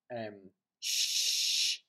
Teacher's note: a slender S is sh, with the lips retracted, and is what you would call alveolar palatal. which means that the body of the tongue is raised to the middle of the mouth, raised to the heart's palate, the hard part of the roof of the mouth.